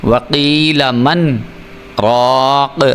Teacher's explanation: وقیل من راق، اب یہ دیکھیں میں نے تھوڑی دیر سکتہ کیا، اپنی آواز کو روکا، تو اسی کو ہی سکتہ کہتے ہیں۔